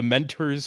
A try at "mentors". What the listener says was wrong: I like the way you say mentors. You say it like it's spelled with a U. It's mentors. It's mentors. Mentors. It's mentors.